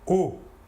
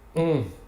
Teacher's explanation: L'air sortira entièrement par la bouche. Alors que pour le on, l'air sortira par le nez. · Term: nasal